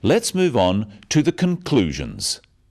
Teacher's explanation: stressing conclusions because it's the key word in the sentence